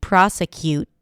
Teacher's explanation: it could be a held T, prosecute, where you just hear that abrupt stop of air. But I don't like those confusions, especially since, native speakers of English may pronounce it with a T or may pronounce it without the T, with a held T.